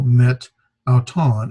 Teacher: But anyway, you see that has an elision where, like meta, before when it precedes it ends in an alpha, it ends in a vowel, and when a word comes after it, when it precedes a word that begins in a vowel, well, the Greeks don't want to pronounce meta auton, so they would drop the vowel met auton, and they would almost say it almost as if one word, met auton.